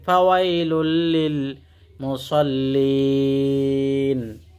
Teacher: তানবিনের পরে যদি লাম আসে তাহলে ইদগামে বেলা গুন্না, মিলাইয়া গুন্না ছাড়া পড়তে হয়। লাম লাম দুই পেশ লুল, মিলাইলাম কিন্তু গুন্না করবে না।